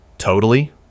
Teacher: With a rising tone. It means, really? No way.